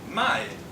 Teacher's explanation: put a distinct falling tone, my, on the first character of the word for my